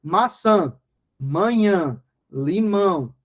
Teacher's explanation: esse tio vai apenas indicar que aquela vogal é nasal. O som vai sair pelo nariz.